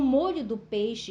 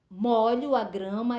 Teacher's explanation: ela apresenta mesma grafia Tá certo porém a pronúncia é diferente No primeiro caso tá a pronúncia do Ó é fechado